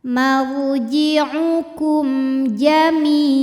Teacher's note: Cara membaca mim sukunnya adalah dibunyikan dengan idhar atau jelas. Bunyinya bunyi M dan tidak kita tahan. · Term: idhar syafawi